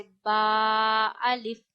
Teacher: बा अदा होता है। दोनों होठों के गीले हिस्से आपस में मिलाने से।